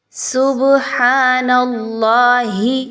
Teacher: با کو ہلایا جا رہا ہے۔ با پر جزم کا نشان ہے، سکون کا، قلقلہ کا حرف ہے با۔ جب بھی اس پر سکون کا نشان آئے گا آپ نے اس کو تھوڑا سا ہلا کے پڑھنا ہے، اسی لیے ہم یہاں پہ سبحان پڑھ رہے ہیں۔